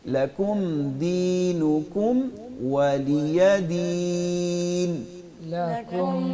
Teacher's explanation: दीनकुम आखिर में मीम साकिन है तो हमने दोनों होठों को मिलाना है आगे वाव आ रहा है उसके होठों को गोल करना है